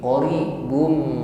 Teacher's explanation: dhammah tanwin bertemu dengan huruf mim, maka di sini ada idgham bi gunnah. Qaribun, dhammah tanwin masuk pada huruf mim.